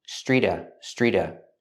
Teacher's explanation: the T and Street is between vows so it changes to a fast D